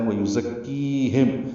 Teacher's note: ہم میں میم ساکن پہ اظہار شفوی ہے · ذات صفیر کے واسطے ادا کریں گے، کاف سے ملائیں گے